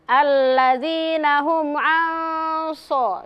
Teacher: Sod itu huruf isti'la. Ketika nun sukun bertemu dengan huruf sod, maka nun sukunnya didengungkan selama 2 harokat. Itu termasuk hukum ikhfa hakiki.